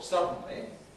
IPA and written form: ˈsʌdn̩li (suddenly)